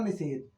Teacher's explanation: यहां हमारा ह्रस्व ई है। इसके बाद दंत स आया तो दंत स का मूर्ध स हो गया। तब जाके शब्द बना हमारा निषेध।